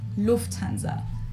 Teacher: So the emphasis on the first syllable